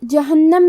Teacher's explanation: جہنم میں حرف النون کو 2 حرف کے برابر پڑھیں گے کیونکہ اس پہ تشدید ہے